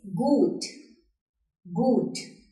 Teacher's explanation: यहाँ पे H नहीं है, तब भी U का साउंड लंबा हो रहा है.